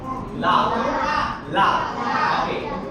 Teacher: சரி இது வந்து லகர லகர லகரம் சரி இந்த லகரம் எங்க படம் அப்படின்னு சொல்லி பாத்தீங்கன்னா பற்களின் அடி பற்களின் அடி இந்த முன்னுக்கு இருக்குற பல் இருக்குல அதுக்கு பின்னாடி நீங்க உரசி சொல்லலாம்.